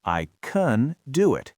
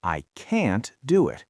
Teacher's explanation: Right, but if you use the rhythm of fluency, the positive form uses a short, quiet schwa, I can do it, and the negative form uses a strong, wide vowel, I can't do it